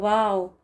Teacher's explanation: تو یہ ڈبلیو والی آواز آنی چاہیے، وی کے ساتھ اس کو نہیں پڑھا جائے گا۔ واو جو ہے وی کے ساتھ، یہ پرومس کے معنوں میں ہے نا، تو یہ نہیں ہے اس کا pronunciation۔